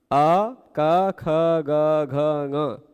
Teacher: विसर्ग को लेकर है ना जिनका उच्चारण स्थान कंठ है चलेगा अ क ख ग घ इन इन सब के उच्चारण के समय आप अनुभव करते होंगे कि आपकी जिह्हावा जो जिह्हावा है वह अलग आकृति नहीं बनाती वैसे फ्लैट रहती सीधी अ क ख ग घ जीभ की जीभ का विचलन नहीं होता विशेष कंठ से सीधे ध्वनि निकलती है।